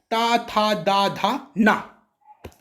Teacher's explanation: तो तावर्ग दांतों से बोला जाएगा।